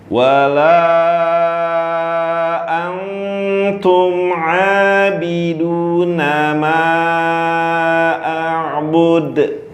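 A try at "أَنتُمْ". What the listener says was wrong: Antum hamas di ta. Tangannya taruh depan mulut. Tadi nggak ada.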